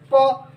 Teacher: कौन सा वर्ग है, प वर्ग है, जो कि आप प बोलिए, प बोलेंगे तो जब भी आप प का उच्चारण करेंगे तो आपके होठ जो है, दोनों ओठ जो है बिना सटे हुए उसका उच्चारण नहीं होगा